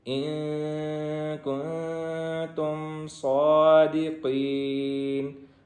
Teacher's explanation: صاد بھی موٹا ہے اور قاف بھی موٹا ہے، ان کو موٹا کریں گے